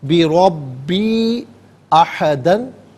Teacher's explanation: یا مدہ کے اوپر مد منفصل ہے، منیمم اس کو 3 سے 4 حرکات کی مقدار کھینچ کر پڑھنا چاہیے